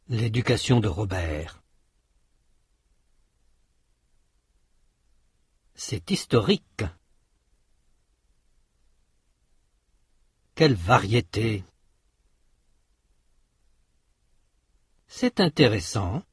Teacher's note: Il n'y a un léger accent tonique qu'à la fin du groupe.